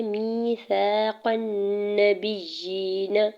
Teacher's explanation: قاف کے زبر کو نون مشدد کے ساتھ ملاتے ہوئے غنہ کرنا ہے اور زبر کو بغیر کھینچے ادا کرنا ہے۔ · میم کے نیچے زیر یا مدہ ہو رہا ہے، دو حرکت کھینچ کے ادا کریں گے